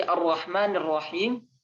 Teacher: ujung lidah bagian bawah nih dengan gusi atas. Itu huruf ro ya. Dan ro ini kalau fathah atau dhammah punya sifat yang namanya tafkhim ya.